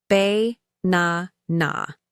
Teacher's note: in banana the stress is on the second syllable